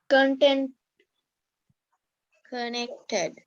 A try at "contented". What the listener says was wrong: What's the ed sound at the end?